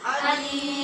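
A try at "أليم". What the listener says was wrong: یہ عین والا علیم نہیں ہے، یہ حمزہ والا ہے. اس کا معنی اور ہوتا ہے، اس کو عین کے ساتھ نہیں پڑھنا. علیم، علیم.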